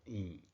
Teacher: 中声调，变调就读低音调